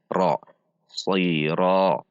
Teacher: Perhatikan huruf ra juga dibaca tebal karena berharokat fathah. Ra dengan menegangkan pangkal lidah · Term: huruf tebal